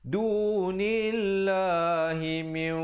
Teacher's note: Asalnya mim baris bawah bertemu nun bunyi min, tapi bila datang dal min 2 harakat. Dunillah dibacakan 2 harakat dan dibacakan lafzul jalalah itu dengan nipis. Jangan pula kita baca dunillah, tak betul.